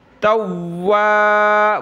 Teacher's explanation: تا کو واو کے ساتھ ملائیں گے تو واو کو شد بھی کریں گے اور ہونٹ گول کریں گے